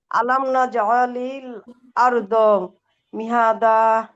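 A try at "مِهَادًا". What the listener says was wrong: মিহাদা হায় টান আছে আপু।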